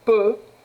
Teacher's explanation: Mais la syllabe peut est une syllabe ouverte, alors on utilise la voyelle fermée.